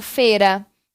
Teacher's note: porque a letra i quase não sai funcionando como semivogal